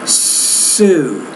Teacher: I'm using the S at the beginning, a voiceless consonant, to begin that word. Now let's contrast that with the Z.